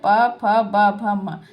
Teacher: प बोलेंगे तो भी बिना ओष्ठ के आप नहीं बोल सकते। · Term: ओष्ठय